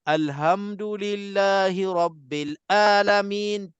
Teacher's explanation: Jelas-jelas dia tukar huruf Ain tu menjadi huruf A.